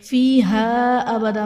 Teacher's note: فیہا ابدا میں الف سے پہلے زبر ہے، الف مدہ کا قاعدہ ہے، اور حرف مدہ کے بعد حمزہ دوسرے کلمہ میں ہے تو یہاں پر مد منفصل کا قاعدہ ہوگا